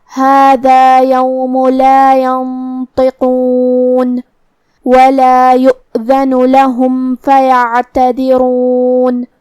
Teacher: کلمت یؤذن میں یہاں حمزہ ہے واو پہ، تو ہم حمزہ کو ظاہر کریں گے. حمزہ کی ادائیگی حلق کے نیچے والے حصے سے ہے